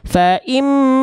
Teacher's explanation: dibacanya dengung 2 harokat tahan. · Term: Gunnah